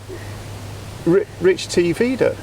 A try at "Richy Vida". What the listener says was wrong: No, there's no T in it. Richy. No T.